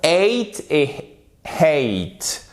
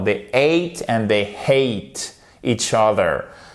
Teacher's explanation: le A à chaque fois se prononce comme une diphtongue, c'est comme ceci en phonétique et c'est comme le A de groseille.